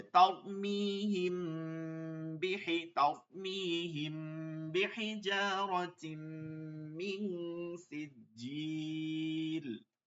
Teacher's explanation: ইকফা বললাম না এইমাত্র কি হয়েছে, মিম সাকিনে ইকফা, ইকফার হরফ কি, বা। মিম সাকিনের পরে বা আসলেই গুণনা করতে হবে